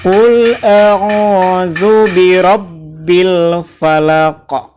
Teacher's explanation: Di akhirnya itu ada hukum qalqalah. Dalam tajwid, hukum tajwid, cara membaca Al-Quran itu memantul.